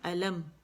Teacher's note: میم پہ کیونکہ یہ ساکن ہے تو ایک کاؤنٹ کے لیے میم کے مخرج دونوں پہ جائیں گے، اور دونوں ہونٹ جو ہے آپس میں یوں جیسے آپ دیکھ رہے ہیں نا ایسے ہو جائیں گے.